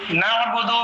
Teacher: جب عین ادا کریں گے تو بیچ گلے سے یہ حرف ادا ہوگا